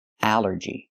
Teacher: The rule is ALL makes the sound all, like ball and call. But here it makes the A sound, the short A like in apple and black